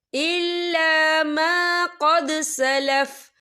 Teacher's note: وقف کی صورت میں فا جو ہے ساکن ہو جائے گا